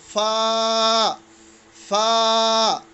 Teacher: When this is labiodental sound in English language, in English phonemes, that is F is considered labiodental. Like इसमें लेप भी है और दांत भी है, ठीक है.